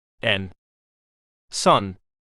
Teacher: Tongue touches alveolar ridge. Nasal.